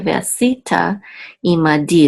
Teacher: The accent is on the last syllable, di.